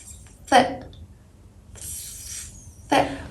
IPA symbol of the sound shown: θ